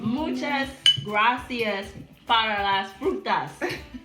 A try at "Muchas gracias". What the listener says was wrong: You gotta roll your R's.